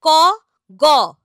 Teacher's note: এখানে দিয়ে রাখছি প্রাণ কথার অর্থ হলো শ্বাসবায়ু অল্পপ্রাণ ধ্বনি কারা না এদের উচ্চারণে প্রাণ বা শ্বাসবায়ু কম লাগে